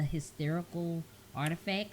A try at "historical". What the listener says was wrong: Historical, not hysterical. That's the wrong verbiage. No, it's not hysterical.